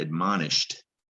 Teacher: you don't hear shed it looks like shed at the end you don't hear the syllable shed you don't hear the e